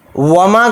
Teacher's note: وما کے اندر واو جلدی پڑھا جائے گا، میم کے ساتھ الف مدہ ہے، میم الف زبر ما کو تھوڑا کھینچ کر پڑھیں گے